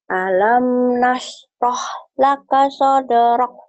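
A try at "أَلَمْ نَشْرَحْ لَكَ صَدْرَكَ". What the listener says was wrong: Rock, hamasnya gak keluar. Rock.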